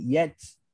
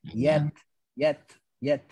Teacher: Makhraj sa, hujung lidah bertemu dengan hujung gigi atas.